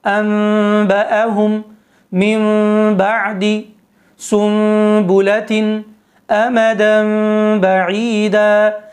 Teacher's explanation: اس کا قاعدہ یہ ہے کہ نون ساکنہ و تنوین کے بعد اگر حرف با آ جائے تو نون ساکنہ و تنوین کو میم سے بدل کر غنے کے ساتھ پڑھتے ہیں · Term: اقلاب